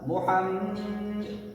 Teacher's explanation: انا یا نون کے اوپر تشدید ہونے کی وجہ سے غنہ کریں گے. ان محمد کے میم کے اوپر تشدید ہے, یہاں بھی غنہ کریں گے ایک الف کے برابر